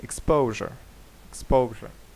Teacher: тобто буде другий склад наголошений